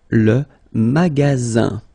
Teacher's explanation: you've got only one S between two vowels. Then you get the sound Z, alright? And then the ending here is IN, so it's nasal, goes in your nose, and it's un.